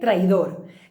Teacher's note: I la síl·laba tònica és dor.